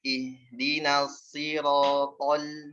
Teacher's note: Harusnya ronya lebih tipis daripada to.